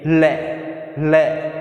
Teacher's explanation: जब अपने लय का उच्चारण करते हैं तो वायु जिह्वा के दोनों ओर से निकलती है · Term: पार्श्विक व्यंजन